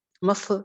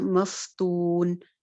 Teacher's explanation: फा की आवाज़ चलती भी होती है, इसकी पर आवाज़ चलती है, तो इसको भी मफ नहीं करना, मफ्तून।